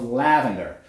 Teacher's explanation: The sound is produced with the back of the tongue at its lowest position for a front vowel. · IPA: /æ/